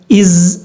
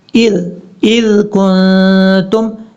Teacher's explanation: ذال کو آپ نے بغیر سیٹی کے ساتھ پڑھنا ہے، از یہ طریقہ نہیں کرنا، اذ کنتم یہ ہے اس کا پڑھنے کا طریقہ۔